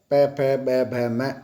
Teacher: ब, क्योंकि ब ओष्ठ्य है, प फ ब भ म ये ओष्ठ्य है, यहाँ होठ मिलते हैं, इसलिए यदि नीचे का होठ नहीं होगा तो ब ध्वनि का उच्चारण नहीं कर पाएंगे।